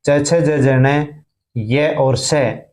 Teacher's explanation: ई च वर्ग च छ ज ज ण य और श, जीभ तालु को स्पर्श करती है इसलिए इनको तालव्य कहते हैं